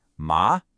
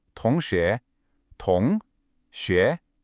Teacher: See how your voice goes up? That's it. It starts in the middle and rises. Ma. Listen for it in the word for classmate. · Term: second tone